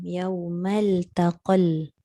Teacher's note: Dia tak bunyi ta, dia bunyi lam.